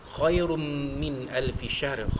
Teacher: tanwin bertemu dengan mim idgham ma'al gunnah, ya, kita masukkan bunyi tanwin